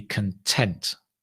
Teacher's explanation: Content, stress on the second, content is to be happy or happy, the adjective.